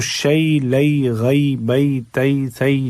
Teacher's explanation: جو بھی حرف چینج ہو آواز نہیں چینج ہوگی، ای کی آواز ہر جگہ آئے گی